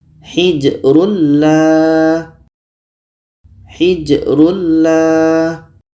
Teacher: Jadi bunyi tanwin ini kita masukkan ke la. Masuknya tanwin kepada la itu sudah sempurna karena bunyi tanwin tidak terdengar lagi. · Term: idgham bila gunnah